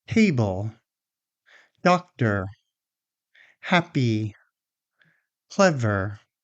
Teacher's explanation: Do you hear how that first syllable is a little stronger than the second one?